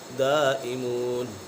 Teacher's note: یہاں پر مد متصل کو دو الف کھین کر پڑھیں گے۔